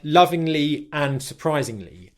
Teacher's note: the '-ing' syllable, which is very simply the short /ɪ/ syllable followed by the 'NG' sound in English · The ng sound, when it comes at the end of words, is the back of the tongue touches the back of the mouth and airflow comes out your nose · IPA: /ŋ/